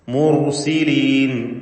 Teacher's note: സാക്കിനത്തായ റാഉം തൊട്ടു മുമ്പിൽ ദമ്മ നൽകപ്പെട്ട അക്ഷരവുമുണ്ട്. അതുകൊണ്ട് റാഇന് തഫ്ഖീം കൊടുക്കണം.